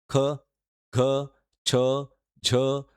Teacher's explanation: ज्या वर्णांचा उच्चार करताना फुफ्फुसातील हवा तोंडावाटे जोराने बाहेर फेकली जाते त्यांना महाप्राण वर्ण असं म्हटलं जातं